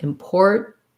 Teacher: many Americans will say important with a stop T and a syllabic N